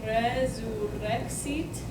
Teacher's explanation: So, in Latin, if you have the word resurrexit, okay, if the R is at the beginning of the word, or if it's double, this is the perfect example of that, then it will always be a rolled R